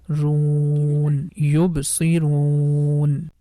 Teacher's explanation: And one more thing, as you can see, letter waw is appearing in orange color, which means that the ru sound we have to make it longer, at least for 3 count. Normally because of letter waw we stretch dhamma sound for 2 count, but when you see letter waw is appearing in orange color, that time we can make it at least for 3 count.